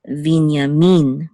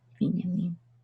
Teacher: But in Hebrew, it's Binyamin with accent on the last syllable.